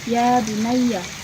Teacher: fathah bertemu dengan alif dibaca panjang 2 harokat